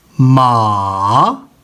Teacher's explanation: 2 से शुरू हुई, 1 की तरफ आई, यहाँ से फिर शुरू होके यानी मुड़ के सीधा 4 की तरफ गई है